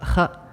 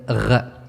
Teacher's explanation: Kh is voiceless, while gh is voiced.